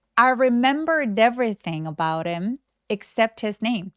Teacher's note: about him 이렇게 열심히 발음하지 않고요. 대명사들의 H 소리를 약화시켜서 about him. 이렇게 소리를 죽여서 많이 발음한다.